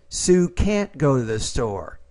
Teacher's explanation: when it's negative you have to emphasize the modal and the verb